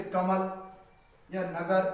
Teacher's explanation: इन शब्दों के दूसरे अक्षर में माँ और गा पर अधिक बल दिया जाता है। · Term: बलाघात